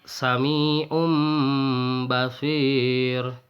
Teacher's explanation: mengganti suara nun sukun atau nun matinya atau tanwin menjadi mim sukun dan disertai dengan dengung selama 2 harokat. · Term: iklab